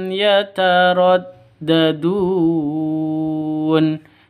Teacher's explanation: Fa izhar saawi jelas terang fahum fibihim yataraddadun yataraddah ini pendek Dun Panjang boleh dua boleh empat boleh enam harakat atau enam ketukan karena Mad Arid lukun kita ulang fahum fibihim y [Musik] qallahulim